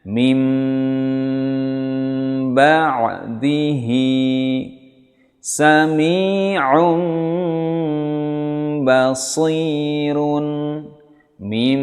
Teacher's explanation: mengubah nun sukun atau tanwin menjadi mim yang bersembunyi atau yang tersembunyi pada ba disertai dengan dengung. Ya, jadi mengubah atau mengganti atau menukar nun sukun atau tanwin menjadi mim. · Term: iklab